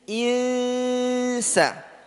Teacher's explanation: pelafatan ikhfa nun sukun bertemu dengan sin. Jangan sampai ketebalan. Jadi yusa, yusa, insa, tipiskan.